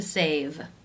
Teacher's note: D sound of voiced consonant for example the verb to save the final sound is the V voiced consonant sound so the ED will take the voiced D sound